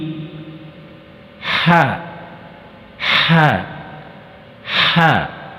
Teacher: اس حرف کی آواز نکلتے وقت حلق سے ہوا رگڑتے ہوئے نکلنی چاہیے